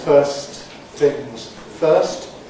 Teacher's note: we normally omit the T in first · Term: elision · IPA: /ˈfɜːst θɪŋz ˈfɜːst/